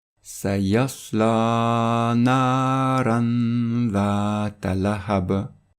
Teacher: le noun avec soukoun, le tanwin, doit être prolongé avec un nasillement, un runna, de 2 temps, 1 seconde, s'il est suivi par l'une des lettres suivantes. · on va prolonger le noun du tanwin parce qu'il se trouve devant le dhal qui est une lettre de dissimulation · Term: la dissimulation